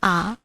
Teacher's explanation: विवृत स्वर के अंतर्गत जो वर्ण आते हैं, विवृत स्वर के अंतर्गत जो स्वर वर्ण आते हैं, उनके उच्चारण के समय मुख प्रायः खुला रहता है। जैसे आ बोलेंगे तो हमारा मुख प्रायः पूरा ही खुला रहता है